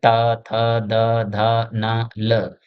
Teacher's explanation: यानी इनका जब हम उच्चारण करते हैं तो जीभ जो है दाँत को टच करती है